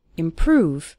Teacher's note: Stress on the second syllable, improve, over time.